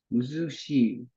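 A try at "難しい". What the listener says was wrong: Muzukashi. I forgot to write the ka there.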